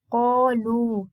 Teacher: here we have got an alif mad that will be read tafkhim because of qaf